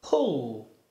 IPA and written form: pʊl (pull)